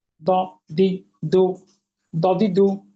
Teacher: জিহ্বার গোড়ার কিনারে উপরে দাঁতের গোড়ার সঙ্গে লাগিয়ে। কিভাবে? মোটা